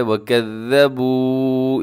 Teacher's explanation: وکذبوا اس کے آخر میں بھی واو مدہ ہے، اس کو بھی لمبا کرنا ہے